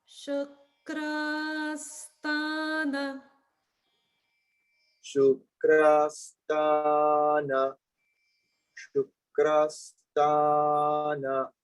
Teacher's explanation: Notice the kras and ta both have a dirgha a. So that a sound will be pronounced for the same length of time. Both are dirgha.